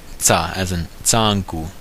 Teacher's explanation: The first way is tsa, which is an affricate, an alveolar affricate